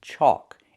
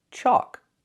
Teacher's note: It has a different spelling. It has the AL, where the L is silent. Chalk. It makes the aw sound like walk and talk.